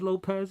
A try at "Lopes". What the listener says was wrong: it's Lopes not Lopez it has not a z